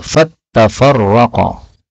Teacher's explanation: ta-nya boleh ditasydid menjadi fattafarraqa